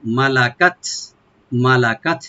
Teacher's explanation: কাফটাকে open করে তাতে আমরা একটু হামস করব।